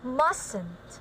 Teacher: Okay, this is also a silent T, like mustn't, right? So we usually not pronounce the T in the middle of the word.